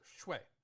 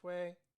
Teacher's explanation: for blood it's fourth tone, so shui. In this one, it's first tone, shui.